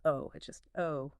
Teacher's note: the upper Midwest accent, especially in Minnesota, is often noted for its very pure long O sound in words like boat or soap